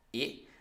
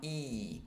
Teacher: The first one, the short one, is also lower. So I have to relax my mouth in order to pronounce it properly. The second one is tensed.